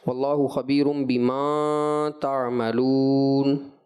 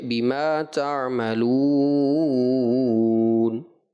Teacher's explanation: حرف مد کی مقدار صرف ایک الف رکھنا چاہیے تھی